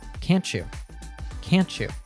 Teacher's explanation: sound at the end of can't blends with the Y sound at the beginning of you, and together they morph into a ch sound.